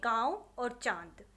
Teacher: अनुनासिक पढ़ा जिसका उच्चारण नाक और मुख दोनों से किया जाता है, जैसे गांव और चांद।